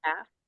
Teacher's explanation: So calf is a good example of a silent L.